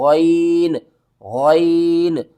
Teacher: غین کو آپ نے حلق کے اوپر والے حصے سے ادا کرنا ہے